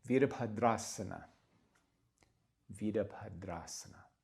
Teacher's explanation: the B is followed by this H and we want to aspirate a little bit.